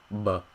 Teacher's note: of your mouth but the Vietnamese big sound is different because the air in your lung is actually going in so it's going in the opposite direction